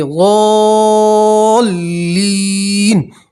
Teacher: گے تو مد عارض وقفی کی صورت بنے گی، تو آپ جب ضالین پہ وقف کریں گے تب آپ حضرات 4 الف تک کھینچ سکتے ہیں · کریں گے تو نون کے اوپر زبر ہے، ٹھیک ہے، تو زبر کو ہٹا دیں گے اور نون کے اوپر جزم پڑھیں گے ، ضالین، اس طرح پڑھیں گے، ٹھیک ہے۔ یہاں بھی آپ